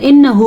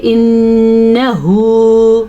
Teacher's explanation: مد کا دھیان رکھنا ہے لیکن نون کے اوپر جو شد آ گئی ہے تو نون کا غنہ ضرور ادا کرنا ہے